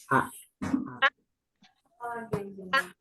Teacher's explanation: Langsung putus, nggak ada udaranya. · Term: jahar